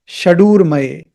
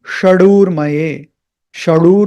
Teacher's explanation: so that means retroflex you have to twist your tongue slightly up